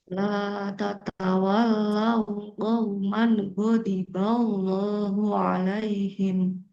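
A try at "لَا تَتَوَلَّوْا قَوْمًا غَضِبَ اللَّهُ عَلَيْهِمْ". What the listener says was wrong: kayaknya terlalu masuk ke tenggorokan qofnya ini pangkal lidahnya qo dekat kaf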